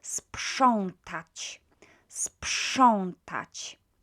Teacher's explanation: PRZ is pronounced as psz. Again, this is our unvoiced consonant cluster situation. When we've got unvoiced consonant, p, very quiet, and the next one is kind of matching it.